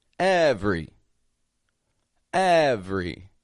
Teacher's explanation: here every every again it's spelled every v r y but I'm taking that middle e right out